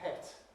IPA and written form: pet (pet)